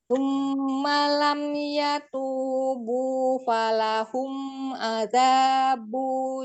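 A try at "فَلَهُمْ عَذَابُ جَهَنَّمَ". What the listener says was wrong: Azabu. Bunya pendek satu harokat.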